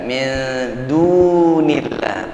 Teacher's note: Panjang ya. Dal yang berwawu, dal yang berdhammah dibantu dengan wawu sukun menjadi mad asli dia, mad tabi'i.